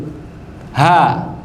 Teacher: tanpa lidah kita bergerak sama sekali dia sudah kesebut. A yang penting buka mulut. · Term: huruf tenggorokan